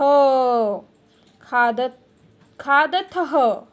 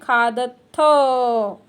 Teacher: विसर्ग का उच्चारण हम ह करके करते हैं और यहाँ पे विसर्ग नहीं है, इसीलिए बोलना है खादथ।